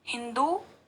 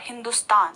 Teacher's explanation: जब हमने हिंदू कहा तो द में जो है वो ज्यादा जोर डाला या फिर वहां पर ज्यादा ऊर्जा खर्च हुई, लेकिन जब हमने हिंदुस्तान कहा तो वहां पर द में कम ऊर्जा खर्च हुई या फिर कम जोर पड़ा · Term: दीर्घ ऊ